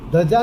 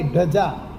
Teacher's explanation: દંત્ય ને સ્થાને મૂર્ધન્ય બોલે અને મૂર્ધન્ય ને સ્થાને દંત્ય